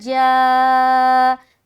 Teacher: تو جا میں کھینچ رہے 3 سے 5 الف کیونکہ یہ مد متصل کا قاعدہ بن گیا